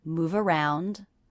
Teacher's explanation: The ending V consonant here linking on to the next vowel, mova, v, move around.